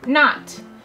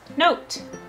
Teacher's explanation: not our vowel sound is the short sound ah but if we add final e to the end it will make o say its name